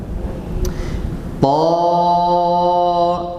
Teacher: Ta, tapi harakatnya fathah, jangan to.